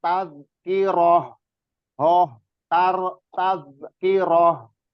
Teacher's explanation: Terus di rohnya ha itu dialirin